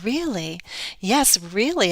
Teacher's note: how we express um surprise and what our voice does with with that emotion how it's often a strong rise fall